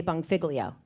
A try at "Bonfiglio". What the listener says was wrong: It's not bong. Bongfilio, no. Bonfilio. Like feel, your leg, feel. Bonfilio.